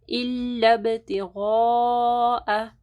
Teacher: الب با کے اوپر جو ہے قلقلہ ہوگا، پھر غین کو جو ہے موٹا پڑھنا ہے. مد ہے اس کے بعد حمزہ ہے تو 4 سے 5 انگلیوں کے برابر لمبا کرنا ہے.